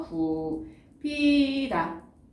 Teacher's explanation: 굽히다 같은 경우에는 비읍과 히읗이 만나서 뭐로 줄어드나요? 피읍. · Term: 거센소리